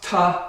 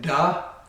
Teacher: Ta is an unvoiced, da is voiced.